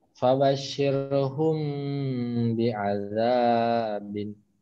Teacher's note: Ikhfa Syafawi sebabnya mim sukun bertemu ba